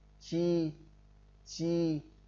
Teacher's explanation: Khi phát âm thì phần trước mặt lưỡi đưa lên phía trước ngạc cứng, tức là chúng ta cong lưỡi lên, đặt cái lưỡi lên trên cái ngạc ở hàm trên của chúng ta, trên đỉnh cái hàm nhá. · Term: nhóm âm mặt lưỡi